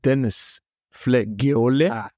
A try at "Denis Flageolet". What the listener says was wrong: Did all right, except you kept putting another vowel in the middle of his surname.